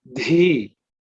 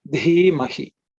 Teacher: Dhi is with aspiration. There should be some air puff coming out.